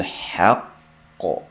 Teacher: Haqq deb qalqala qildik. Boshtikisi sakinlik o'qildi, keyingisi qalqalik o'qildi.